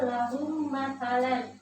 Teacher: Idgham mimi ini terjadi apabila mim mati bertemu dengan huruf mim. Cara membacanya ialah menyuarakan mim rangkap atau mim yang ditasydidkan.